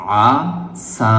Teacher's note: আইন বলার সময় গলার ভিতরে একটু চাপ দিবেন